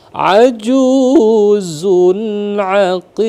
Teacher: Jadi ajuzun di sana ada idhar ya, idhar halki. Jadi kita baca jelas di sana.